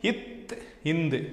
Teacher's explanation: போயி இத்துன்னு சொல்றப்ப பொருந்துதா மேல்வாய் பல்லின் அடியில் பொருந்துதா அதான் சொல்றாங்க அப்ப இத்து இந்து மேல்வாய் பல்லின் அடியை நாக்கின் நுனி பொருந்துவதால் தோன்றுகிறது · மேல்வாய்ப்பல்லின் அடியை நாக்கின் நுனி பொருந்துவதால் தோன்றுகிறது